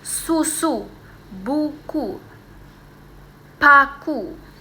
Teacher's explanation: Karena lidahnya ini naik tapi di posisinya itu di belakang dia terdengar bulat dan kuat. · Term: U vokal tinggi atas belakang